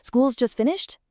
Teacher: School's just finished. See how my voice goes up at the end? That rising intonation completely transforms it.